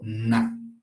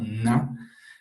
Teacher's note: el aire empieza a salir por la nariz. Y aquí en esta parte ustedes pueden observar vibraciones. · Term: consonantes nasales